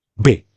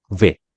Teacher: Bukan bibir ketemu bibir, tapi gigi ketemu bibir.